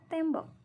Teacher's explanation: C kecil terbalik bunyi belakangnya itu sedang bulat